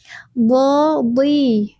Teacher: Huruf d huruf tebal ketika kasrah tetap tebal ya teman-teman. D di. Jadi bukan di tapi di nadi.